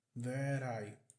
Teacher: Aqui o T, mais uma vez, entre vogais, vai ficar com o som de R.